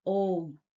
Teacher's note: इनके उच्चारण में ह्रस्व और दीर्घ स्वरों के उच्चारण से तिगुना समय लगता है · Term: प्लुत स्वर